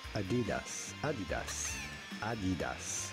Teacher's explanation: without stressing on any syllable in particular